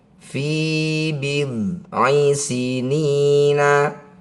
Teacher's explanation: Cara bacanya ni panjangkan enam harakat. Huruf terakhir sukunkan fi bid sinina ketika dihentikan fi bid sinin lillahil amru min qablu waim ba'd.